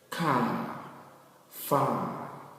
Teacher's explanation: one is longer examples car far s m s p c so here we perceive that the a sound here is longer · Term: long a sound